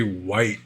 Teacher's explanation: most people who speak English no longer pronounce the H in WH words